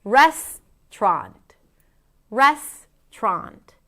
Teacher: The middle syllable can be eliminated.